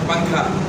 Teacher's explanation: نون جو ہے نا اس کی آواز چھپ جاتی ہے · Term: اخفا